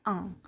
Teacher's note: Lalu ada velar nasal. Contoh bunyinya adalah bunyi ang.